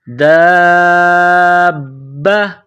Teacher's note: اگلا حرف دیکھیں، دال الف با مد، دال الف با کو ملائیں گے، پھر مد کہیں گے، دال الف با مد زبر با زبر با، دال الف با مد زبر با زبر با، دابا۔ با کے اوپر تشدید ہے تو با کو دبا کر پڑھیں گے، جماؤ کے ساتھ، سختی کے ساتھ